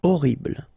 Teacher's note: first letter is H, but then we don't pronounce H, so you don't pronounce it, and the first thing you hear is O